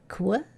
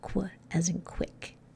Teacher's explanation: It's that k of the K and w of the W. Those two sounds together make this one